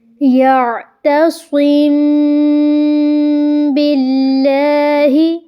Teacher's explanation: یہاں پہ بھی ہم میم کی آواز کو چھپا رہے ہیں ناک میں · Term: اخفاء شفوی